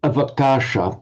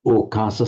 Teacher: Sometimes the ava in Pali as a prefix is softened or lenited to o